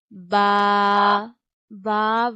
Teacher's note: We read from the wet part of both lips.